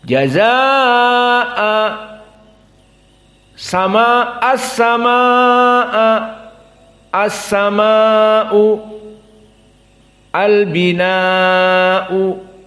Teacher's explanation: qiraah Ibnu Katsir mad wajib muttasil yamuddu arba harokat